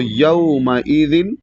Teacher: یومئذ نہیں پڑھنا ہے، یو پڑھیں گے تو یہ مجہول ہو جائے گا، جو کہ غلط ہے. اس کو یو پڑھنا ہے، یا با زبر یو، یعنی واو کی طرف مائل کرنا ہے زبر کو